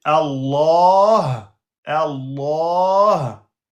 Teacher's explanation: Remarque, cette lettre est une sorte de petit H se prononçant depuis le fond de la gorge en ouvrant partiellement les cordes vocale